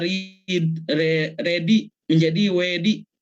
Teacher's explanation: Likuida L dan R ditukar dengan bunyi luncuran, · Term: peluncuran